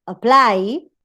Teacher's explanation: Now, if the final syllable is strong, for example, in the case of apply, if the final syllable is strong, then that syllable is stressed, even if the first syllable is also strong. In the case of apply, you have diphthong here, which is stronger than a schwa.